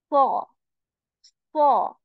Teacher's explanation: I'm also raising the back part of my tongue. And my mouth feels full. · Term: heavy sod